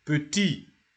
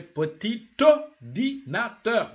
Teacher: When the word adjective, petit, is isolated, petit, you don't pronounce the T. But here you say petit ordinateur. You join.